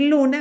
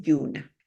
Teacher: hay donde cambia un sonido Okay por otro que sea palatal cualquier sonido lo cambia por un sonido palatal